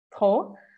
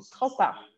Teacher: a gente fala com o R do francês e o O bem fechado e não pronuncia o P